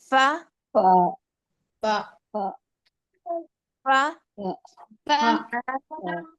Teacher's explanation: تو یہ ثنایا علیا کے کنارے، نوک، نیچے کے اندر کے جو گیلا حصہ ہونٹ کا ہوتا ہے نا، وہاں پر لگائیں گے تو فا ادا ہوگا